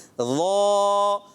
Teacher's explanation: اب ناک میں نہیں جانی چاہیے